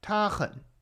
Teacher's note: we have ta, which is at the top of your vocal range, and then 很, which is at the bottom. And then you go back up to the top and quickly go down.